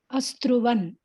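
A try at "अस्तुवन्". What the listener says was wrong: Astuvan, not Struvan, Astuvan. Astuvan.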